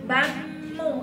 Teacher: hukum mem sukun bertemu dengan mim itu idgham mimi ya. Jadi dia dengung ya